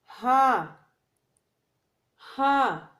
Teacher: ہاں اقصی حلق سے ادا کیا جاتا ہے. اقصی حلق سینے کی طرف والا حصہ ہوتا ہے حلق کا.